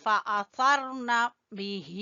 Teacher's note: با کو چھوٹا پڑیں گے، ہی کو کھینچیں گے کھڑی زیر کی وجہ سے۔